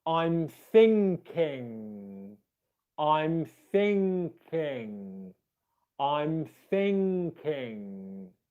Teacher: you want to make sure that you're getting both of the ngs in there